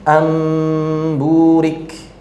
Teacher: mim bertemu dengan ba itu diiringi dengan ikhfa yang mengakibatkan gunnahnya memanjang